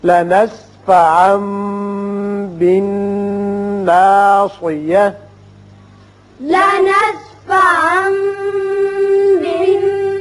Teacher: یہاں تنوین کے بعد با ہے لہذا اقلاب ہوگا